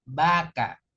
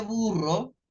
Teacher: los labios se echan hacia atrás vaca pero cuando te dice burro fíjense que los labios se van hacia adelante